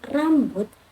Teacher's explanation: konsonan getar di mana lidah bergetar ketika bersentuhan berulang kali dengan langit-langit